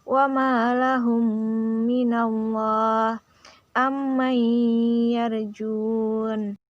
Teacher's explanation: Cara membacanya seperti menyuarakan mim rangkap atau ditasydidkan dan wajib dibaca dengung 2 harakat. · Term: idgham mimi